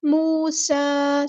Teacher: جاءکم موسیٰ، واو مد آ گئی ہے، واو ساکن ہے، اس سے پہلے پیش ہے تو ایک الف کے برابر لمبا کریں گے، ایک الف ہوتا ہے 2 حرکات یعنی 2 کاؤنٹس کے برابر۔ موسیٰ، سین کی سیٹی ہم واضح کریں گے، سین پہ کھڑا زبر ہے تو مد اصلی ہوگی۔